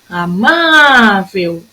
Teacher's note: A minha sílaba tônica nessa palavrinha é o má.